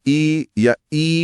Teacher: जीभ का अगला हिस्सा ऊपर तालू की तरफ उठ रहा है। यह बहुत सूक्ष्म हरकत है पर हो रही है।